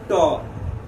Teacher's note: जीभ मुड़कर जहां सट रहा है ऊपर वाला स्थान पर उसको कहते हैं मूर्धा